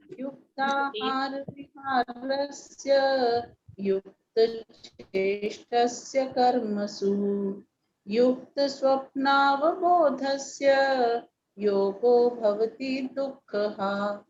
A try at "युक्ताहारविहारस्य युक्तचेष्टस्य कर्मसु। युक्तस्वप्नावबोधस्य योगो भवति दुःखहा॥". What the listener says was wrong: हाँ जी बिल्कुल ठीक।